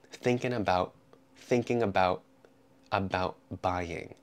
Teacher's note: the T in about turns into a glottal stop, thinking about buying.